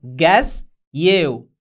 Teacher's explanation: أي كلمة منتهية بصوت الأس لو جاء بعدها كلمة تبدأ بصوت الواي بتدمج الأس والواي مع بعض وبينتج صوت الشين SH